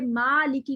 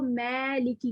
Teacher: باریک الف کو اتنا باریک نہ پڑھا جائے کہ وہ امالے کی طرف جھکاؤ ہو جائے, یعنی کہ ما لکی کو میں لکی کر کے پڑھنا شروع کر دیں.